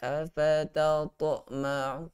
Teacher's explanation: qalqalah sughra dia agak sukar pada huruf ta. Kita lantunkan dengan lebih kecil kan.